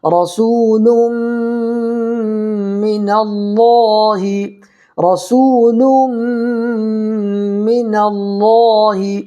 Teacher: واو ساکن سے پہلے پیش ہے، اس لیے واو مدہ ہوگا، اس کو بھی ایک الف برابر کھینچ کر کے پڑھیں گے، اور ایک الف کی مقدار یعنی 1 سیکنڈ کھینچ کر کے پڑھنا ہے۔